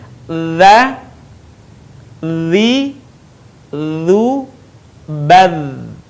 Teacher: menyentuhkan ujung lidah kita dengan dinding dua gigi seri bagian atas. Suara mengalir dengan lembut tanpa diiringi dengan mengalirnya udara. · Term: huruf dha